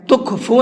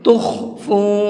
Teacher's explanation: تخفو کے اندر خا کو منہ بھر کے پڑھنا ہے، تخفو نہیں پڑھیں گے اس کو، بلکہ تخفو۔